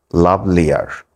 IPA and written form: ˈlʌvliər (Lovelier)